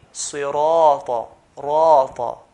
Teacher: We're going to stretch the alif, stretch the ra, 2 counts. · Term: letters of stretching